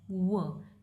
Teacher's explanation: Labial velar, यानी कि labial means lips, और वेलर का एरिया इसमें यानी कि सॉफ्ट पैलेट का जो एरिया है, ये दोनों आर्टिकुलेटर आपस में आर्टिकुलेट करके ये वो साउंड को प्रोड्यूस करते हैं। · प्रॉक्सिमेंट है, दैट मीन्स क्लोजर तो होता है इनमें, बट इतना नहीं कि एयर टर्बुलेंस क्रिएट हो सके, ठीक है। ऑरल है, यानी कि नेजल कैविटीज में ब्लॉक होती है।